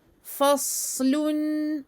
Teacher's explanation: on fait ici dam irja', on revient avec les lèvres à la normale à la fin.